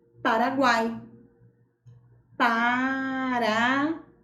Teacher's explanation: veja bem a letra u é pronunciada com menos intensidade a letra Na é pronunciada com mais força com mais intensidade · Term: semivogal